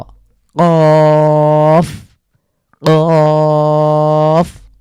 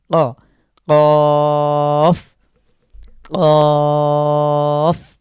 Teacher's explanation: তো এটা ক একটু ধাক্কা দিয়ে আমাদেরকে উচ্চারণ করতে হবে। ক জীভের গোড়া উপরের তালুর সাথে লাগিয়ে ধাক্কা দিয়ে আমরা আমরা উচ্চারণ করছি